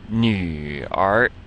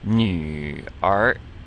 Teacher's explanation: So you don't need to go down on the nu and then up on the nu and then go back down again and come up on r. It's like you're coming down on nu and then up on r.